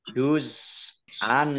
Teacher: Za sukun ini juga bukan kolkolah, jangan dipantulkan.